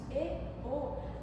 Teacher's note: Quando pronunciamos E, O, a posição da nossa língua vai ficar na posição média alta.